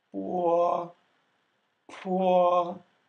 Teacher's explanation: the difference between po and po was in that puff of air with the P sound